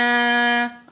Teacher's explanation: नून अलिफ ज़बर ना, अलैना, अलिफ से पहले ज़बर है, अलिफ मद है, तो 2 सेकंड हमने अलिफ को खींचकर पढ़ना है